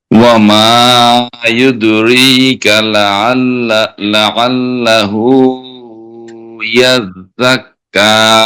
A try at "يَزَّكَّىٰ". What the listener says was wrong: শেষে কিন্তু ঝা ইয়াজ, ঝা কিন্তু উচ্চারণ হয় নাই। আরো সিটি আওয়াজ হবে আবার, ইয়াজ